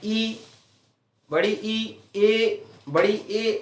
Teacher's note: स्वरों का उच्चारण करते समय जीभ का आगे का हिस्सा काम करता है, उन्हें अग्र स्वर कहते हैं।